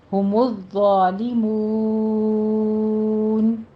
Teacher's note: مون میں آپ نے مو جیسے بو کہتے ہیں اس طرح اسٹریٹ آواز رکھنی ہے، اس کی آواز ناک میں نہیں جانی چاہیے